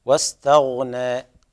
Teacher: الغين ساكنة لا يجب القلقلة فيها